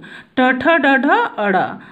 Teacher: जिह्वा जब मूर्धा को छूती है तो ट ठ ड ढ अड़ वर्ण निकलते हैं